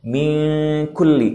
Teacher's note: karena kaf ini adalah salah satu huruf yang dibaca di pangkal lidah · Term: ikhfa